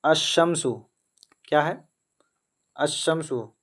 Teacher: لام سائلنٹ ہو گیا اور شین کے اوپر تشدید آئے گا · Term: حروف شمسی